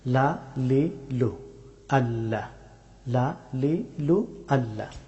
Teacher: লাম হরফটি উচ্চারিত হয় জিহ্বার সামনের অংশের কিনারা এবং উপরে তালুর শক্ত অংশ চুইয়ে লাম হরফটি উচ্চারিত হয়।